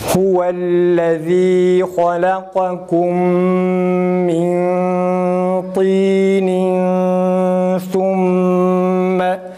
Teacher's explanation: Mesela thumme sa'nın ötresini okurken mime bağladığımız zaman mimin gunnesinde ise dudağın geride olması lazım. Önde yaptığımız zaman o gunne güzel çıkmaz ve yanlıştır.